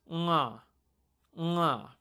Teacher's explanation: It is not unga. You're trying to say the N in words like song or long. You're ignoring the G, but you're just keeping that nasal element. So when you say bank, that ng sound in bank is what this letter represents.